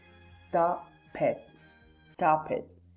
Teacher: the consonant sound is going to be linked with the vowel sound.